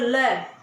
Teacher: पार्श्विक व्यंजन का मतलब होता है जब हम ल को बोलते हैं तो जीभ के दोनों बगल से हवा निकलती है